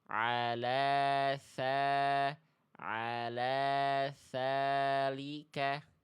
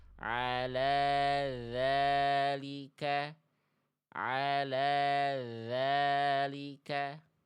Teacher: Cukup yang mengalir dari huruf dalal hanya suara saja. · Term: huruf zal